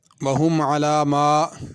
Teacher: میم کے بعد الف ہے، اس کو کھینچنا ہے، عَلَى مَا جلدی سے نہیں پڑھنا